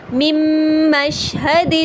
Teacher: جب میں نے میم میں مدغم کیا تو نون کی کوئی آواز باقی نہیں رہی، ہم نے نون ساکن کو میم میں داخل تو کیا، غنہ بھی کیا، لیکن یہاں پر کوئی 50-50 ساؤنڈ نہیں ہے۔